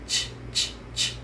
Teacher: we use our tapping sound t and our quiet sound sh together. Start with your tongue behind your teeth as if you're making the tapping sound. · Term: chopping sound